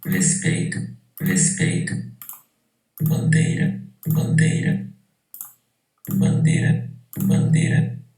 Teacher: bandeira, pronunciado como monotongo, como vogal